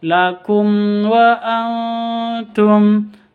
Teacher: Mim sukun bertemu dengan wawuh jelas bacanya karena izhar safawi.